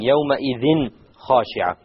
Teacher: Clarity, because it's followed by a kha. And kha is of the letters of the throat, which will be a clear thing.